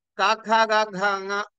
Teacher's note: ఇవన్నీ కూడా వీటి ఉత్పత్తి స్థానము ఏది అంటే కంఠము అన్నారు. అంటే ఆ కవర్గము, హకారము, విసర్గలు ఇవన్నీ కూడా కంఠస్థానము.